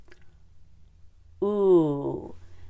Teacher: The work is mostly done by pulling the tongue all the way backward. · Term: long U